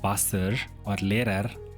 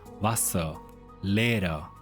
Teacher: Words ending in ER often do not sound like a strong English R. So instead of heavy Wasser or Lehrer, German often relaxes that ending closer to Wasser, Lehrer, not sloppy, just lighter. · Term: the relaxed ER ending